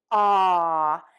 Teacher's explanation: To do this, wide open oval mouth, tip of the tongue is low, back of the tongue is pulled up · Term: open, short, ah sound